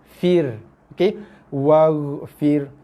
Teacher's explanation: ra mati sebelum dia bagi bawah, ra mesti wajib dibaca dengan sifat nipis